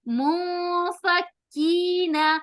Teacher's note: منفکین, مو نون ساکن کے بعد فا آ رہا ہے تو یہاں پر ہم اخفا کریں گے. اخفا کرتے ہوئے غنہ بھی ہوگا, یعنی آواز کو تھوڑا سا لمبا ہو کریں گے. منفکین, فک کاف کے اوپر تشدید آنے کی وجہ سے کاف 2 بار ادا ہوگا اور وہاں تھوڑی سختی کریں گے.